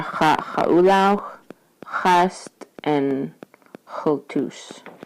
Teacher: the wedge X, are said pronounced in the same place as a Q. So back here in your throat. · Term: wedged X